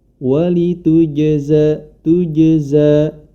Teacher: jangan sampai huruf qalqalah tersebut dibaca mati suaranya atau suaranya terputus, sebagaimana yang dicontohkan walitujza tujza, tetapi memantulkan, tetap mengalir bacanya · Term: sifat qalqalah